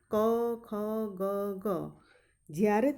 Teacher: તમે આ બોલશો ત્યારે તમારો ઉચ્ચાર કંઠ માંથી નીકળશે એટલે એને કંઠ્ય કહેવામાં આવે છે